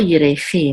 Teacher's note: and the accent is on the last syllable